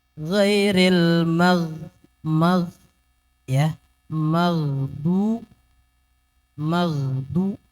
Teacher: Ghairil jangan terlalu tebal, jangan sampai mantul. Mog juga nggak boleh.